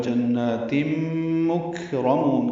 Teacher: نہیں پڑھیں گے، اولئک کاف باریک ہے، فی یا مدہ ہے، جنات میں نون مشدد پہ غنہ ہے، 2 حرکات لمبا کریں گے